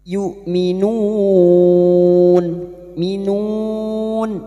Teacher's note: Hamzah sifatnya jahar dan syiddah, tertahannya nafas dan tertahannya suara.